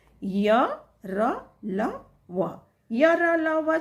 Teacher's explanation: हम अंतस्थ वर्ण कहते हैं य र ल व अंतस्थ वर्ण वे वर्ण जिनके उच्चारण करते समय फेफड़ों से निकलने वाले जो प्राण वायु होते हैं वह मुख के किसी भी भाग को स्पर्श नहीं करती है